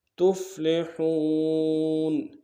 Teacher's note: گے، لعلکم تفلحون، تا کو فا کے سامنے لانا ہے، اور ہا کو واو کے سامنے لانا ہے، واو مدہ ایک اعتدال میں کھینچیں گے ، ہا کو گہرائی سے ادا کریں گے، تفلحون واتقوا اللہ